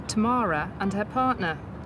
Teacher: You see, the word between the two words, Tamara and the word and, you've actually added an extra R to join those two words together to give it a good flowing link.